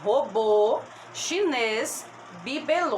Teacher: a sílaba tônica dessas palavras é a última